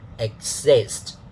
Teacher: Okay, I keep repeating this. Now, the pitch pattern. So it falls on the second syllable. For the first syllable, because there is nothing before it, we don't really have to put a dot before it because it's just, of course, it's one syllable, right?